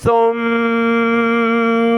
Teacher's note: اس کی ادائیگی میں سیٹی کی آواز نہیں آنی چاہیے جو کہ سین میں آتی ہے، یہ سین کی طرح نہیں ہے۔